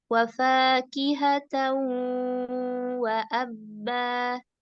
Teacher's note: tambah lagi suara idgham bi gunnah ke hidung.